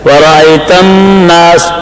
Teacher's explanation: نون مشدد میں غنہ ہے، اس میں ذرا وقت لگا کر دیر لگا کر پڑھنا ہے